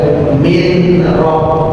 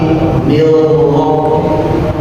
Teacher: Seakan-akan nunnya itu nggak ada sama sekali. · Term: idgham bila gunnah